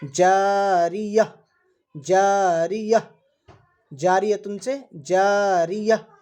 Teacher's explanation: گول تا پر وقف کرنا ہو تو وہ ہائے ساکنہ سے بدل جاتی ہے